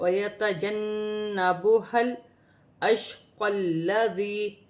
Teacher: قاف کو لام کے ساتھ ملا کر پڑھا جائے گا، لام مشدد ہے، 2 مرتبہ پڑھا جائے گا، پھر یا مدہ ہے، یا ساکن سے پہلے زیر آ رہی ہے تو یا مدہ بنے گی۔